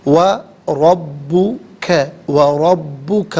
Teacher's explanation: را پر زبر ہے، را کو پر کر کے پڑھیں گے، با مشدد ہے، جماؤ کے ساتھ پڑھیں گے۔